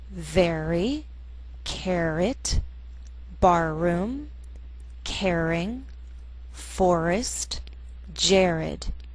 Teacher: r first blends with the preceding vowel and then leads into the next vowel sound like a consonant